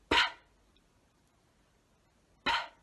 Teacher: To make the P sound, your top lip and your bottom lip come together, we turn our voice off and we go P, P.